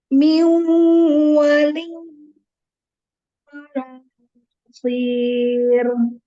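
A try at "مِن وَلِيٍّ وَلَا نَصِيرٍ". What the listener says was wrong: Ro-nya nanti ditipiskan ya. Ro ditipiskan. Tetapi ini coba dimasukkan. Wawunya itu idgham bil gunnahnya masukin ke hidung gitu loh. Coba lagi, maksudnya suaranya masukin ke hidung.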